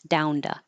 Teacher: this T and two can change to a duh because it's between two voiced sounds, the n, and the vowel